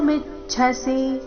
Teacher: ಮಿ ಮೇಲೆ ಆಘಾತ ಕೊನೆಗೆ ರಸ್ವ